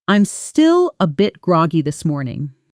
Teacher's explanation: The stress falls on gr and the whole phrase flows together almost as one word. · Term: natural rhythm